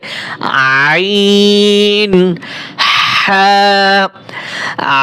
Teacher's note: 2 নম্বর মাখরাজ হলকের মধ্যখান হইতে, হলকের মধ্যখান হইতে আইন হা। আইন, আইন গলার ভিতর দেখেন আমি কিভাবে একটু চাপাই বলি, আইন হা।